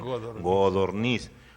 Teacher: Entonces, pero debemos reconocer que hay muchas partes donde dicen godorniz, porque la C suele sonorizarse en G, que es un fenómeno fonético